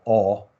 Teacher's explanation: And he was using sort of back rounded vowels in Southern British English. And so they have this sort of low back rounded vowel, all, like that you get in like Potter, like Harry Potter, like that all vowel.